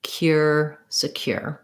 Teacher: The stress is on the cure syllable. Again, that SE is not, it's not secure, but rather secure.